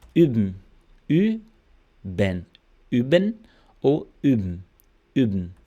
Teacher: Essa aqui é fácil, você vai fazer o biquinho, agora o biquinho mesmo pra fora, assim, né? Como se estivesse pronunciando U mesmo, U. Só que você vai fazer o bico e falar I. Mas aí, né, vai mais pro U mesmo.